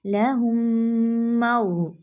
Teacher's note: मीम साकिन के बाद मीम है ना तो ये मर्ज हो जाएगा इसमें, इदगाम में शफवी का कायदा है तो इसमें गुन्ना मुकम्मल करेंगे